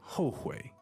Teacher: This is a very useful word. Fourth tone, third tone, right?